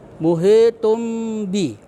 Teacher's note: Iklab itu artinya menukar atau mengganti. Jadi cara membacanya dengan menyuarakan tanwin. Ya, tanwin dengan mim.